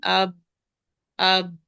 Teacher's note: बा दोनों होंठों के मिलने से अदा होगा